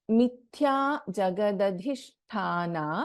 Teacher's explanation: इन मिथ्या थ is अ महाप्राण अक्षरा